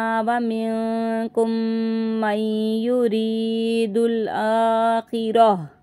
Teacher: गोल ता को हम हा में बदल देंगे क्योंकि हम यहाँ पे रुक गए हैं